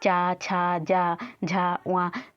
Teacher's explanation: च छ ज झ व आता है तो वो हम कहां से बोलते हैं तालू से बोलते हैं